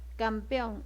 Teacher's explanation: ¿Dónde está la fuerza de voz? En on.